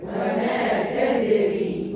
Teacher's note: نعم الراء مرققة لأنها مكسورة في وسط الكلمة